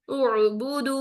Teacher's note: टू counts लेके जाऊंगी तो क्या बन जाएगा उबूदु गलत ठीक वन काउंट हमजा की हरकत अदा करें आइन साकिन में फौरन चले जाए